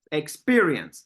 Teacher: second syllable is the one that is stressed